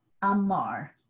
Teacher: So if I say amar, he said, my stress is on mar, the second syllable